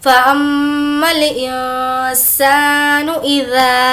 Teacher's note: अलिफ मद्दा होने की वजह से खींचेंगे